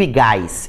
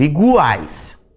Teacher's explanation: Eu tenho uma semivogal, mais uma vogal, mais uma semivogal na mesma sílaba, tritongo. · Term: tritongo oral